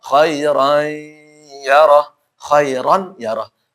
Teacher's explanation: Ya karena dia idgham bi gunnah. Fathatan ketemu ya.